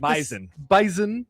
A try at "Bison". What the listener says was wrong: Z. It's with a Z.